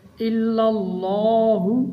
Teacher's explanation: لا الہ الا اللہ، اللہ تعالیٰ کے نام کو موٹا پڑھیں گے کیونکہ اللہ تعالیٰ کے نام سے پہلے لام کے اوپر فتح ہے۔ پہلے لام کو ملائیں گے تو باریک پڑھا جائے گا، دوسری بار اللہ والا لام موٹا پڑھا جائے گا۔